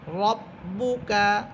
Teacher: র বা সবর রব, বা পেশ বু, রব্বু, কাফ সবর কা, রব্বুকা। এখানে বা হরফের উপরে আছে পেশ, ঠোঁট গোল করে পড়বেন